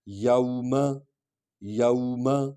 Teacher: یہ وا حرف لین ہے، اس سے پہلے زبر والا حرف ہے تو اس کو ہم نرم انداز میں پڑھیں گے